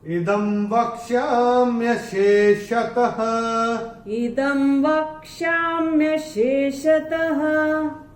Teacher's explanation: चरण की समाप्ति पे जो विसर्ग आ रहा है उसका उच्चारण केवल और केवल ह होगा